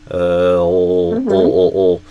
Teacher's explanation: for me I think of dark L as like pulling my tongue kind of backward towards my throat.